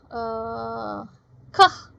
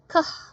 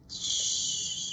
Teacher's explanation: Kah itu not vibrated atau voiceless karena ketika kita producing bunyi kah ya, vocal cord-nya itu tidak bergetar ya. Kah gitu. Dia memang terlihat bergerak tetapi tidak ada getaran di dalam vocal cord kita.